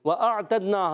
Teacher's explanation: وَأَعْتَدْنَا، حمزہ کو عین سے ملانا ہے، حمزہ اور عین کلیئر کرنا ہے، واضح کرنا ہے اور خوب ظاہر کرنا ہے. تا کو دال سے ملائیں گے، دال میں قلقلہ ہوگا. قلقلہ حرف قلقلہ ہے 5، قاف طا با جیم دال، تو اس میں قلقلہ ادا کریں گے، آواز لوٹ کر آئے گی. · دونوں ہونٹوں کو گول کریں گے تو واو ادا ہوتا ہے. وَأَعْتَدْنَا، حمزہ کو عین سے ملانا ہے، حمزہ اور عین کلیئر کرنا ہے، واضح کرنا ہے اور خوب ظاہر کرنا ہے.